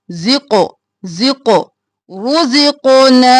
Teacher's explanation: رزقنا رو موٹا اور جلدی سے، رو اور زا سختی سے قاف کے ساتھ ملائیں گے، قاف قلقلہ اور موٹا بھی ، زقو رزقنا نا کو ایک الف کے برابر کھینچیں گے،